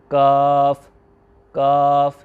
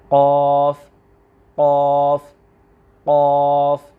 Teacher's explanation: کتاب والا جو کش والا کاف ہے اس کا مخرج تالو کا سخت حصہ۔